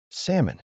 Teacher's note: There's a silent letter hiding in this word. The L is completely silent. We don't say it at all. The correct pronunciation is salmon.